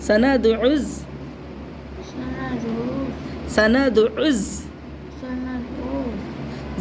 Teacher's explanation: دال میں قلقلہ ہوگا اور عین کو حلق سے نکال کے پڑھنا ہے, زا کو سیٹی سے پڑھنا ہے